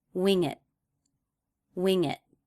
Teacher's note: This should feel like one idea and not 2 separate words. It can feel like the ending consonant ng begins the word it. Wing it. In this case, that ending T was at the end of a sentence, so it was a stop T.